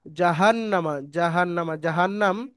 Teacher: জাহান্নাম শব্দটি পুরোটা হারাকাত চিহ্ন তাড়াতাড়ি পড়তে হবে টান দেয়া নিষেধ এবং নুনের উপরে তাজদিদ গুন্না করা ওয়াজিব এখানে ওয়াজিব গুন্না আছে